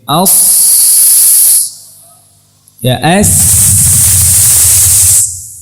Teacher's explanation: Mahfum insyaallah. Jadi udara tadi ada sebagian menabrak ke gigi seri atas, ada sebagian menabrak ke gigi seri bawah, kemudian keluar dari tengah di antara dua gigi seri. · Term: huruf sin